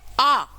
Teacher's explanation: आ को बोलने में मुंह सबसे ज्यादा खुलता है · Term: विवृत